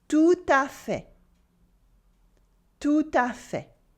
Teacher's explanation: with a liaison in the middle and the silent T at the end of fait.